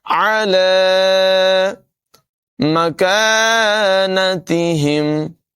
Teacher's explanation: کاف کی آواز باریک ہوگی، یہاں پر الف مدہ ہے، کاف کو لمبا کر کے پڑھیں گے